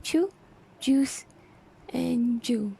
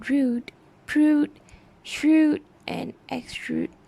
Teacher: the omission of sound y before oo